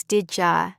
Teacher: Did you becomes did ja and would you becomes would ja which still sounds polite in context. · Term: reductions